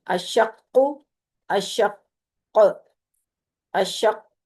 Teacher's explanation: کاف کو پر بھی کیا، کاف پہ کلکلا بھی کیا، اور کاف کی تشدید بھی ادا کی